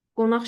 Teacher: Yəni, məsələn, qonaq sözünə fikir versəniz, müstəqil işlədək bu sözü. Tələffüz zamanı q, x əvəzlənməsi özünü göstərir. Qonaq şəklində tələffüz olunur.